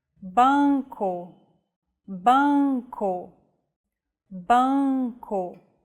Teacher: relax your soft palate and the back of your tongue so the nasal passage is not blocked it's like coming with your mouth open and adding the vowel · Let the air pass through both your oral and nasal passages. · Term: nasal vowels